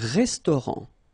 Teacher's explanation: final t not pronounced